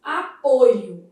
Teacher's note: Nesse substantivo, a gente vai ter uma vogal o fechada.